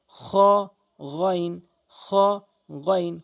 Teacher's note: হলকের শেষ থেকে এ দুটি হরফ